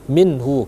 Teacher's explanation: Minhu baru dibaca izhar atau dibaca jelas, ya. Minhu karena mati bertemu dengan ha, izhar jelas, ya.